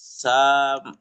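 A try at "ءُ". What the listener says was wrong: এটা কি, এটা এটা মু, এটা কিসের হরফ? এটা কি অক্ষরটা কি? তাহলে মু কেন বলছেন? ও হবে, হামজা পেশ ও।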